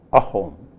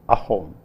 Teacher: in assamese if a word begins with a vowel then it begins with a glottal stop so you say ahom instead of a home you will say